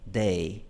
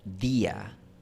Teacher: O sea, justo detrás de los dientes superiores. Por eso en inglés, la pronunciación, por ejemplo, de day, suena un poco más percusiva que en español cuando decimos día